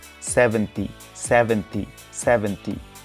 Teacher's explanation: 7 plus T. Remember the V sound and bite a little bit your lower lip.